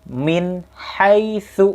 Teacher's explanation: nun mati bertemu dengan hak itu Nun nya jelas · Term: Izhar